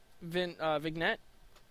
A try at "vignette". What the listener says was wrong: I think it's vignette. I think you don't pronounce the G.